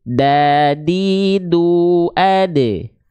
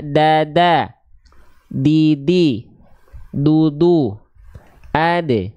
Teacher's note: Watto'u wadalu watamin huwamin ulyasanaya. Ujung lidah kita menyentuh dengan pangkal gigi sari atas. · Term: huruf dal